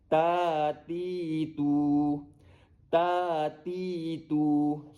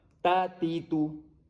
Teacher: Saya tambah ketiga-tiganya, alif, wau dan ya. Jadi bunyinya semua panjang. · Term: mad asli